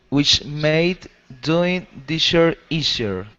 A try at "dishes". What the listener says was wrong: instead of disher this is dishes with an s at the end